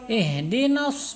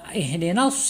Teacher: ada alif lam tapi tidak terbaca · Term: alif lam syamsiyah